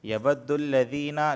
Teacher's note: لذی کو اس وجہ سے کھینچ رہے ہیں کیونکہ یہاں پر یا پر جزم ہے اور اس سے پہلے زیر آیا ہے